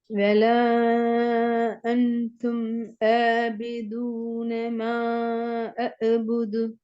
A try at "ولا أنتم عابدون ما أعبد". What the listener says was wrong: நீங்க கீழுக்கு போறவே இல்லை கீழுக்கு போகவே இல்லை மூன்றாவது சொல்லு